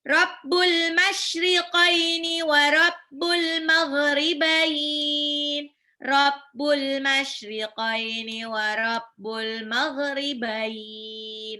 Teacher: Jadi bukannya baini, bukan wal maghribaini, tapi wal maghribain. Gha-nya agak ngorok dikit ya.